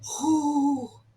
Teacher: the sound is WHOOO, but we sort of say it in the back of the throat